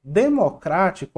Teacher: Democrático, a sílaba tônica é a antepenúltima